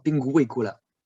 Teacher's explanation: In pinguicula, you hear not the U but the W. The R. That's not like in our bad French language, R, but R, like in many languages in Eastern Europe. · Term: W as a semiconsonant